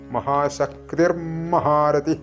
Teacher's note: അപ്പോൾ ഇനി നമ്മൾ ചൊല്ലുമ്പോൾ ശ്രദ്ധിക്കേണ്ടത് മഹാശക്തി പ്ലസ് മഹാരഥി എന്ന് വരുമ്പോൾ അവിടെ മഹാശക്തി കഴിഞ്ഞ് വിസർഗം അതുകഴിഞ്ഞിട്ട് വീണ്ടും മ വരുന്നതുകൊണ്ട് ഇർ ആയി മാറും